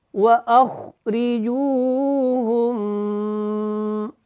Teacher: خا موٹا ہوگا، را کے نیچے زیر ہے، یہ باریک ہے